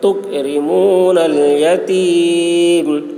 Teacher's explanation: رو باریک ہوگی اور قاف میں قلقلہ نہیں ہوگا، چھوٹا قاف ہے